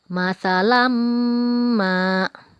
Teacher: ada tanwin bertemu dengan huruf Mim Ayo kita baca dengung atau kita panjangkan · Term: idgham maal ghunnah